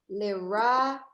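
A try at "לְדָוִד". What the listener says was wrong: Okay, that's a D. Le David. Me's more Le David.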